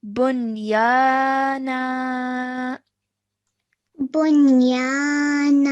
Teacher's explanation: at the end we're just stretching the na sound out for 2 seconds